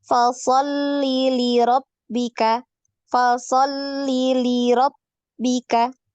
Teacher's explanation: Inna li-nya ini pendek ya, jangan dipanjangkan.